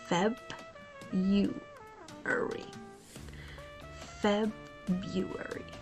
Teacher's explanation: most native speakers simplify it to February and here's what's happening the first syllable Feb is emphasized and clear · The first syllable, Feb, is emphasized and clear. Next up, the R is silent, making the second part sound like February.